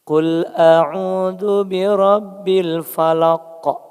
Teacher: Diakhiri huruf qaf. Bunyinya qalqalah. Kalau di akhir dan disukunkan sebelumnya harokatnya hidup, itu qalqalah kubro ya.